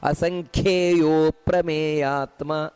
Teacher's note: ಅಸಂಖ್ಯೆಯ ನೋಡಿ ಕ ಅನ್ನುವುದು ಮಹಾಪ್ರಾಣ ಅದರಿಂದಾಗಿ ಅಸಂಖ್ಯೆಯು ಅಂತ ಅಷ್ಟೇ ಹೇಳುವುದಲ್ಲ ಅಸಂಖ್ಯೆಯೋ ಪ್ರಮೇಯಾತ್ಮ ಆ ರೀತಿ ಅಲ್ಲಿ ಅಪ್ರಮೇಯಾತ್ಮ